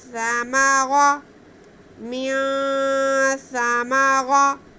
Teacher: سا میم را تینوں پہ زبر ہے، را کو پر پڑھیں گے اور آواز کوئی بھی کھینچے گی نہیں